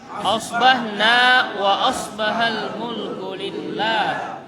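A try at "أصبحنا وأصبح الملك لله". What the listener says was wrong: Jadi selalu kalau pagi itu memakai huruf shad. Memakai huruf apa? Shad dan bukan sin. Bukan apa? Sin. Jadi kalau sin itu kita bilang as. Tapi kalau shad itu as. Tapi jangan o, os, tetap a dulu. As. Asbahna wa asbahal mulku lillah.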